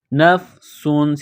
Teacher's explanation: سین میں سیٹی کی آواز، سین کو باریک کرنا ہے